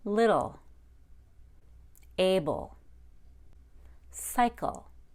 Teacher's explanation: The L is preceded by a schwa sound.